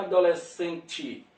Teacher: No final, geralmente, o E pronuncia I, mas tem alguma região que vai falar E, adolescente.